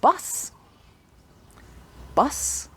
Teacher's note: When you say the word bus, bus, you shouldn't feel the vibration for the s sound. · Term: voiceless sound